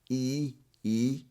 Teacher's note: So it's a tense sound. So the tongue is a bit higher.